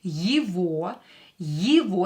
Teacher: Again, е is not stressed. We will pronounce it as и.